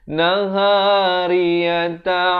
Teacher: Ra bari kasrah jadi nipis.